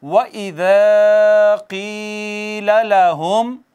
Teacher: व इज़ा में वाव को हमने होंठ गोल करके पढ़ा, हरूफ शफ़विया में से है।